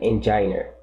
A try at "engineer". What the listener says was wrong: Okay, so engineer. Engineer. Okay, that stress goes on the last syllable. This is where the accent would be. Engineer. Engineer. Actually, engineer. Engineer. Engineer. It's not on the penultimate. It's on the last one. Engineer.